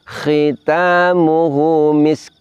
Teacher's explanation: dari segi nafas sin itu hames mengalir nafasnya. Kemudian dari segi suara ada bunyi desisnya. · Kemudian kaf salah satu sifatnya diantaranya adalah kaf ini hames juga, nafas mengalir. Jadi sin sukun dan kaf sama-sama ditampakkan sifatnya.